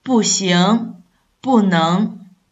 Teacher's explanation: But when it have in front of the other syllable, especially the first tone, second tone, and third tone syllable, the pronunciation will remain the same. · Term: tone sandhi